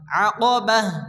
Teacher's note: আয়াতের শেষে গোলতা আসলে হা সাকিনে পরিণত হয়।